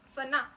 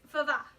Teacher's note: I'm shortening those vowels. So they're not the same length, and they're not the same vowel even, really.